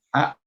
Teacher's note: un joven pronuncia como a, glotalizando esa T